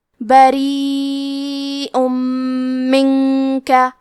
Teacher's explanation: ہم تنوین کو میم میں ملا کے غنہ اور تشدید کے ساتھ یہ حکم کو ادا کریں گے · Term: ادغام